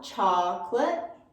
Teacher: really wide on the ah